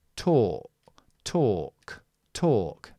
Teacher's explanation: the vowel of these words, is the long O, which in English, British English, is with your lips very rounded. So, it's or. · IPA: ɔː